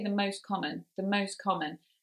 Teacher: we know that the t is there and the words are still very clear anyway so that sound is lost